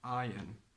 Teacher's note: Okay, but because this is English, there is always an exception to the rule, and this exception is iron. Iron, R followed by O, which is a vowel, but we do not pronounce the R. It's a silent R.